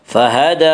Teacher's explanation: دال کے اوپر کھڑا زبر ہے، کھڑا زبر کو ایک الف کے برابر کھینچ کر پڑھیں گے۔